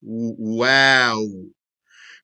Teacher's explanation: the wow, it leaves an opening between the lips.